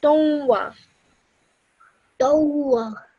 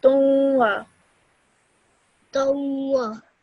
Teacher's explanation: you have to produce a 2-second nasal sound in your nose